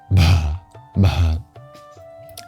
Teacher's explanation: the BH sound is breathy. Imagine saying H and B at the same time, voicing and aspirating.